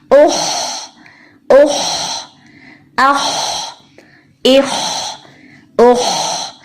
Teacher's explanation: آواز اوپر تالو کی طرف رہے گی, منہ سے باہر نہیں آئے گی. اور حلق کا اوپر والا حصہ خا کا مخرج ہے جس کو ہم ادنا الحلق بھی کہتے ہیں, یعنی حلق کا بالکل اوپر والا حصہ. · خا موٹا حرف ہے. زبان کی جڑ کو اوپر کی طرف اٹھا لیں اچھی طرح. آواز کو منہ میں بھریں گے. آواز اوپر تالو کی طرف رہے گی, منہ سے باہر نہیں آئے گی.